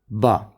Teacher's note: با ادا ہوگا آپ کے دونوں ہونٹوں کے ملنے سے